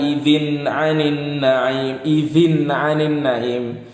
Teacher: Ain itu termasuk huruf izhar. Maka tanwinnya harus dibaca jelas